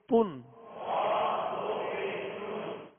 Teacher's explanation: اور دو پیش جو ہیں یہ ہونٹ گول کر کے ادا کریں گے. اگر ہونٹوں کی گولائی کامل نہیں ہوگی تو یہ مجہول پڑھا جائے گا، یعنی تن اور تن، یہ فرق آپ محسوس کریں.